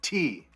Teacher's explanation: Notice there's a puff of air that comes out of my mouth when I say T, okay? If you are like many languages, you don't have that puff of air, okay?